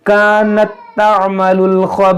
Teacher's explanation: یہاں پر وقف کریں گے تو یہاں سا ساکن ہو جائے گا اور سا کو نرمی سے پڑھیں گے